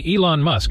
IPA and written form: ˈiːlɒn mʌsk (Elon Musk)